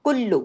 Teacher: कुल्लू सख्ती से लाम डबल है। दोनों बारीक है।